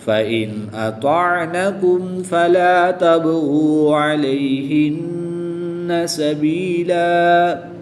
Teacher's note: 2 زبر کی تنوین کو وقف میں الف مدہ سے تبدیل کر کے پڑھیں گے۔